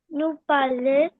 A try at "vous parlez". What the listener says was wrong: Vous with the V. Vous parlez?